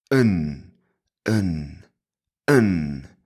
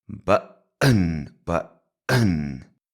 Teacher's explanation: So that is basically a schwa n.